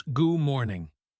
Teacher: Good morning becomes goo morning. The D vanishes.